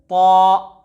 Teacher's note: ता का मखरज जुबान की नोक और सनाया उलिया की जड़ से